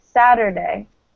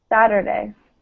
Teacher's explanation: It's like either a really light T sound or a D sound almost.